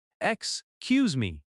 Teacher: Excuse me has stress on cuse. · In natural speech, it sounds like scuse me.